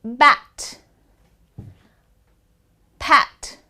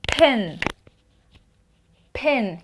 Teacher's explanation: b p so it's b feel the vibration p feel the air